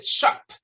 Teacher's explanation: Si usted se pone la mano acá cuando dice shop, ese es último sonido, que es una P, con salida de aire fuerte, allí no hay vibración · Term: unvoiced sound